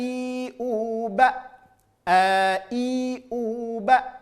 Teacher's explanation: huruf hamzah dari pangkal tenggorokan